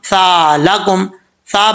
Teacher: जुबान की नोक ऊपर वाले दांतो के निचले हिस्से से लगे तो सा पढ़ जाता है बगैर सीटी के एक अलिफ की मदार इसको लंबा करेंगे क्योंकि अलिफ है अमला · زبان کی نوک اوپر والے دانتوں کے نچلے حصے سے لگے تو سا پڑھا جاتا ہے بغیر سیٹی کے، 1 الف کی مقدار اس کو لمبا کریں گے کیونکہ الف ہے۔